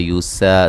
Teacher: سین کو باریک سیٹی سے